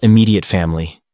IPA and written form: ɪˈmiː.di.ət ˈfæm.əl.i (immediate family)